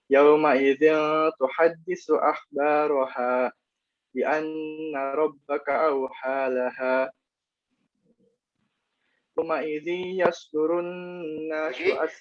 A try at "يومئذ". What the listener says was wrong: Yauma'idzi. Kalau tadi bertemu ya, saya dengarnya nggak dengungin.